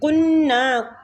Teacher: قو کو نون کے ساتھ ملائیں گے، تشدید ہے، غنہ بھی کریں گے اور نون کو کھینچیں گے بھی